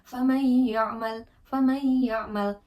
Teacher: atau tanwin bertemu dengan salah satu dari empat huruf tersebut gitu maka wajib dibaca sepanjang dua harakat disertai dengan dengung nah proses ini tuh seperti meleburkan bunyi sukun atau tanwin ke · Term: idgham bighunah